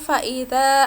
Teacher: Dibaca panjang 2 harokat atau 2 ketukan. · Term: matopi'i